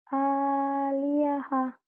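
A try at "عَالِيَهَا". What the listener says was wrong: Hanya panjang. Hanya panjang. Kan ada alif.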